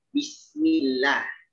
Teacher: Vokalnya lebih disempurnakan, bunyi tipis pada lafaz Allah ya, lafaz jalalah. Bismillah, bukan Bismillah.